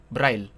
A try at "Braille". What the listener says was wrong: Just don't add Lee. It's Braille. It's like sound, it sounds like Braille.